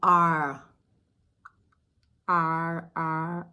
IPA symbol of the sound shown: r